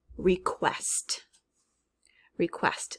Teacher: when we say this word request we hear the kua right